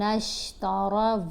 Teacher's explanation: تا اور را کی آوازوں کو بالکل بھی لمبا نہیں ہونے دینا